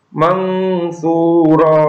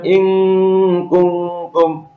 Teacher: Ini disamarkan seolah-olah setelah membaca nun sukun itu langsung masuk pada huruf sin-nya, atau terdapat nun mati bertemu huruf sin. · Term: ikhfa